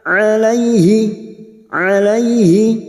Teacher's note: fathah bertemu ya sukun huruf lain, kita lunakkan